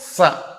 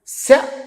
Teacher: సకారం దంత్యం శకారం తాలవ్యం రెండిటికి ఎంత తేడా ఉంది